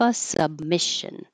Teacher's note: you won't hear that B because your lips will close, but not release B noise